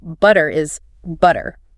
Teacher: In British English, they tend to keep a much clearer, crisper T sound. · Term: clear T